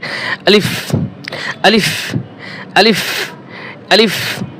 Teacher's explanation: মুখের খোলা জায়গা থেকে আলিফ উচ্চারণ হয়, মুখের খোলা জায়গা থেকে। তাহলে আলিফ উচ্চারণ করতে কোনো টান হবে না, দ্রুত উচ্চারণ করতে হবে।